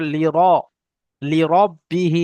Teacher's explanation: র উচ্চারণ করার সময় র এর উপরে যখন জবর থাকবে তখন ঠোঁট দুটো গোল হয়ে যাবে